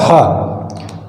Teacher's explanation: हा है जो सघोष है, महाप्राण है, सघोष है तथा महाप्राण है और कंठ ध्वनि है